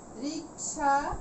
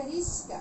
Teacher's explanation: একই রকম ব্যঞ্জন থাকবে, শুধু ব্যঞ্জন আমরা স্থান পরিবর্তন করে নেব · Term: ধ্বনি বিপর্যয়